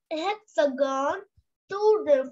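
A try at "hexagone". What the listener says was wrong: Not hexagon. H will be silent. Hexagon.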